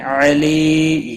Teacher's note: علی یا مدہ ہے, ایک الف کے برابر کھینچ کر پڑھیں گے, اور وقف کی صورت میں میم ساکن پڑھا جائے گا.